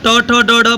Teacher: जब आप ट ट, ड, ड बोलते हैं तो आपका जीभ आपके दांत वाले दांत के ऊपर वाले भाग को टप से मारता है। उसी को कहते हैं मूर्धा।